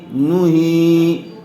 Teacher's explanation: قاف لام پیش قل، حمزہ نون زیر ان، نون یا زیر نی، قل انی، نون پیش نو، ہا یا زیر ہی، نو ہی۔ ہا کو تھوڑا کھینچ کر پڑھیں گے، اس لیے کہ زیر والے حرف کے بعد یا مدہ آئی ہوئی ہے